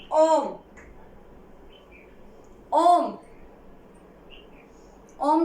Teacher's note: अब इसमें क्या लगेगा, ह्रस्व से तिगुना समय। ऐसे वर्ण जिनको बोलने में, जिनका उच्चारण करने में ह्रस्व से तिगुना समय लगता है वो प्लुत स्वर कहलाते हैं